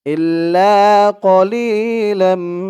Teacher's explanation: এখানে ইদগামে বাগুন্না গুন্না হবে কারণ তানবিনের পরে ঈদগামে বাগুনার চার হরফের এক হরফ মিম আসছে তাসদি সহকারে